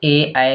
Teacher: ए ऐ क्या है कंठ और तालु से है